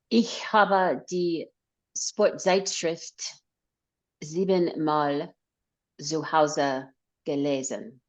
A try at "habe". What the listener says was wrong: Now, the pronunciation is habe. So the A is long.